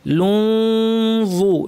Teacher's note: নুন সাকিমা ওয়া ইখফা করতে হবে, অর্থাৎ ওয়ের মাখরাজে জিব্বাকে লাগাবো বা কাছাকাছি নিব, পুরোপুরি লাগাবো না, নাক থেকে গুন্না করবো।